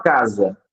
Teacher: essa letra s ela não tem o som de s mas sim o som de z aí você tem o fonema Z casa né assim como a